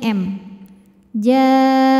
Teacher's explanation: hukum Idam Mimi sebab mim sukun bertemu dengan mim berharakat maka mim pertama dileburkan ke mim kedua sambil kita tahan bunyi dengungnya